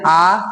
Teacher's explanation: विवृत यानी मुख पूरा खुल जाता हो, आ ऐसे बोलते हैं आ, इसमें मुख पूरा खुल जा रहा है